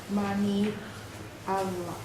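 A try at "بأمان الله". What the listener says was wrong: Bi amanillah. We don't say bi amani Allah. Remember, I told you there is Allah, there is Allah. When before the word Allah, when before the name of Allah there is kasra, then we make the word, we make the name of Allah softer.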